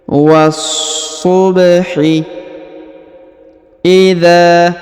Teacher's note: huruf dza dipanjangkan dua harakat karena di depannya terdapat Alif